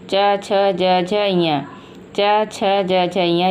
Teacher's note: च, छ, ज, झ, ञ ये 5 व्यंजन तालु से बोले जाते हैं। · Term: तालव्य वर्ण